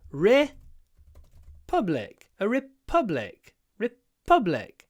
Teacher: How do we put the stress on the second syllable? By doing a pause before the p.